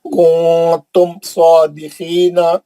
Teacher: کنتم نون ساکن کا اخفا ہے لیکن میم کا اظہار ہے نا